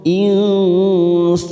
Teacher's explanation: Khalaqal nun sukun bertemu sin, ikfa ausat, kita samarkan 3 ketuk · sa fathah diikuti alif 2 harakat